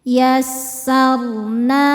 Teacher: roho sukun dibaca secara tafkhim karena sebelumnya fathah maka rnya dibaca tebal